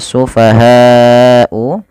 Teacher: panjangkan lafal bunyi ha sepanjang empat harakat atau lima harakat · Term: mad wajib muttasil